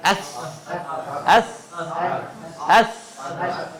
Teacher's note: سا تھوڑا سا موٹا ہے اور ہوا باہر جائے گی اس میں، ایس، ایس، ایس.